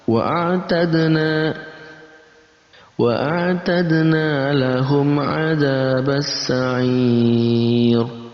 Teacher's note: masih ada mad arid li sukun, kita baca 2 sampai 6 harakat · ada dal berharokat sukun maka masuk dalam kategori qalqalah, kita pantulkan